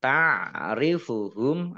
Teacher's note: mim sukun bertemu dengan huruf ba bacaan ikhfa syafawi dibaca samar-samar